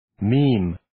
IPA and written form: miːm (Meme)